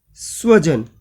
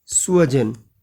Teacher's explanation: स दंते सकार की जगह हम तालव्य श बोल दें तो गड़बड़ हो जाएगी